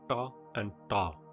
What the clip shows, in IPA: ʈa and ɖa